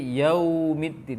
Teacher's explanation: wawu sukun pada yaumi tidak boleh keluar dari hidung